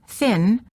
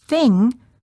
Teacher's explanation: the tip of the tongue is down, not touching anywhere. The back of the tongue is up, touching the soft palate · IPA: /ŋ/